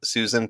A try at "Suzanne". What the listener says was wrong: Suzanne. Susan. Wrong emphasis.